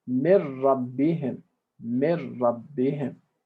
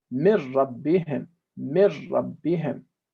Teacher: we're linking the nun and the ra, and we're making the nun disappear. And we're not basically having any residual sound from the nun. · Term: idgham bila ghunna